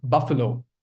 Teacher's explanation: Stress is on the first syllable. This word has three syllables. Buffalo. Three vowel sounds. That's why three syllable and the stress lies on the first syllable.